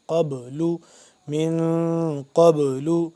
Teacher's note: با کے ساتھ جب مل رہا ہے قاف تو با ہو گیا ساکن، تو پھر ہم با پہ قلقلہ کریں گے ، ٹھیک ہے، آواز کو پلٹائیں گے جیسے پیچھے پڑھا ہم